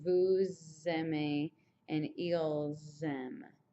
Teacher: And since all of these, these end in S's and these all begin with vowels, you have the liaison kind of sound